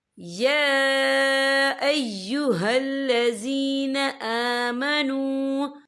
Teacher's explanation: या के ऊपर खड़ी हरकत है और इस पर छोटी सी मद भी है, तो हम इसे 3 या 4 हरकत के बराबर खींच के पढ़ेंगे